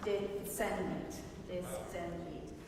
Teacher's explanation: Should be a TS, not a sh sound